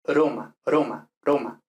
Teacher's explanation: en italiano se suele decir que la r al principio de palabra es simple